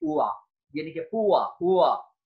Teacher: the vowel where two different vowel qualities can be heard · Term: diphthongs